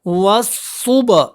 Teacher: با کے اوپر قلقلہ بھی کریں